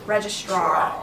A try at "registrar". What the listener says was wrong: You don't have to hit straw so hard.